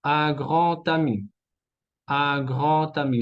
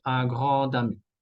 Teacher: La D se transforma en T.